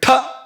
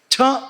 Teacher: ಮತ್ತು ಎದೆಯ ಸ್ನಾಯುಗಳನ್ನ ಸಂಕೋಚ ಮಾಡದೆ ಹೇಳೋಕಆಗೋದಿಲ್ವ ಅಂತ ಉಸಿರನ್ನ ಬಲವಾಗಿ ನೂಕಿ ಹೇಳಬೇಕು ಮಹಾಪ್ರಾಣ ಅಂತ ಯಾಕೆ ಕರೀತಾರೆ ಅಂದ್ರೆ ಉಸಿರನ್ನ ಬಲವಾಗಿ ನೂಕಬೇಕಾಗುತ್ತೆ ಮಾತ್ರ ಅಲ್ಲ ಇಲ್ಲಿ ಸ್ನಾಯುಗಳ ಸಂಕೋಚ ಏರ್ಪಡುತ್ತೆ ಮುಖ್ಯವಾಗಿ ನಾಭಿಯ ಪರಿಸರದಲ್ಲಿ ಸ್ನಾಯುಗಳ ಸಂಕೋಚ